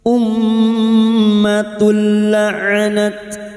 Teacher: Maka bunyi duma tanwin masuk pada huruf lam tanpa mendengung, tanpa ditahan lama-lama hanya masuk tanpa mendengung. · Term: idgham bila gunah